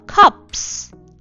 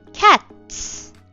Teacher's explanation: cup 다음에 s가 붙일 때는 진짜 바람이 빠지는 소리가 나면 돼. 그래서 cups. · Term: 무성음